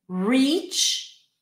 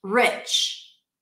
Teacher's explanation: this distinction between the tense E and lax I